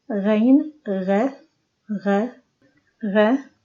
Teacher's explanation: Ghain also has no equivalent in English. It is ghe, and it is done by the upper throat.